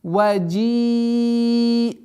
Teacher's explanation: Удлинение огласовки кясра в размере 4 огласовок, после которого применяем четкое произношение фатху.